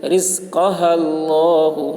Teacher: لام کے اوپر تشدید ہے، تشدید والے حرف کو 2 مرتبہ پڑھیں گے، ایک مرتبہ پہلے حرف سے ملا کر اور ایک مرتبہ خود اسے